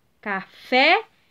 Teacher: café é última sílaba tônica